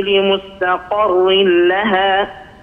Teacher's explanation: القاف مستعلية وبعد القاف المستعلية عندنا الراء مكسورة بالتالي هذه الراء مرققة